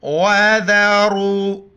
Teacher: قوف بڑی قوف ہے، قوف لام پیش، قل، لام کڑا زبر لا، ہا زبر ہے، آمنوا اتقوا اللہ، لفظ اللہ موٹا پڑھنا ہے، پر پڑھنا ہے۔ وَذَرُوا، را کو موٹا پڑھیں گے، اس کے اوپر پیش ہے